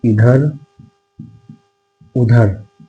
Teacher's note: केवल मुख का प्रयोग किया गया है। इसमें नाक का प्रयोग नहीं है। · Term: निर नासिक